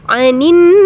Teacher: Mim dan nun bertasydid itu disebut gunnah. Jadi teman-teman harus mendengungkannya.